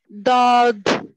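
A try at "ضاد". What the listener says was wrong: थोड़ा सा खींच के सिस्टर।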